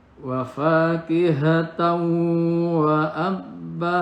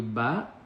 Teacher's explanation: Kemudian wafakihatan wa abba, abbanya mad iwad, dibacanya tidak ban tapi ba, karena diwakofkan di akhir, fathah tanwinnya menjadi ba biasa, menjadi fathah, dibaca 2 harokat